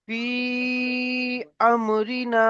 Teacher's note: হুরুফে মাদ্দার পরে হামজা যদি দ্বিতীয় শব্দের প্রথমে আসে তাহলে এই মাদকে মাদ্দে মুনফাসিল বলা হয়। মাদ্দে মুনফাসিলকেও 2 থেকে 3 আলিফ পরিমাণ টান দিয়ে পড়তে হয়। এখানে দেখুন আছে ফি আমরিনা, ফা ইয়াজের ফি, 2 থেকে 3 আলিফ পরিমাণ টান দিতে হবে।